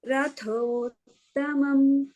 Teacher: Rathas is Tha Mahaprana. Tamam is Ta Alpa Prana.